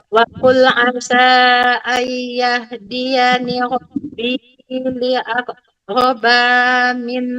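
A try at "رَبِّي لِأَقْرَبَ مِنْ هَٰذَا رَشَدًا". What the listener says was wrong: tidak boleh panjang. Min aqraba min hadza. Robbi li aqraba. Harus Robbi.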